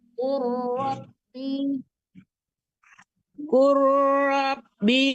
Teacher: nya jangan tertahan ya Bu mauka [berdehem] ila maad qul bu ibu nah jangan langsung jangan dimatikan lam langsung ke Ro ya lamnya hilangkan